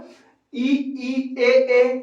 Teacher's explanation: इसका उच्चारण जीभ के अगले हिस्से से होता है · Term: अग्र स्वर